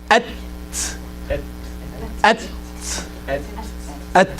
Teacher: from the tip of the tongue touching the roots of the teeth, the root, not just the gum, not just at the lining, but the root of the tongue.